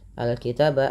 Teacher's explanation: Nah, mad tabi'i fathah bertemu alif. Al-kitaba alif lam qamariyah, dibaca dengan jelas suara lamnya